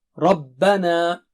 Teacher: را موٹا ہے، با باریک ہے